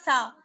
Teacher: ثنایا علیہ کا کنارہ اور زبان کی نوک، یہ ہے سا کا مخرج. اب آپ لگا کر دیکھیے اپنی زبان کو، زبان کی جو نوک ہے آپ کی، آپ اپنے اوپر کے جو سامنے ہلکی سی بالکل جو زبان ہے آپ کی وہ باہر کو نکلے گی.